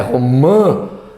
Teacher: Aquele som nasal, quando o cara tá meio gripado, tá todo fanho. Então, uma parte do ar sai pelo nariz, outra pela boca. Então, este A é exatamente o caso em que eu tenho uma nasalização.